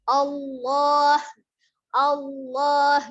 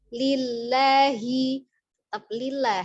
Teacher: lamnya dibaca dengan tebal dengan menekan makhraj